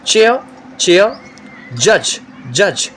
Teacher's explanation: Complete closure of the oral passage and slow release leading to friction. Means first the mouth will be completely closed and then there will be slow release with slight friction. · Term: africate consonant sounds, affricates